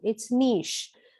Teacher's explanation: the ch is pronounced as a sha sound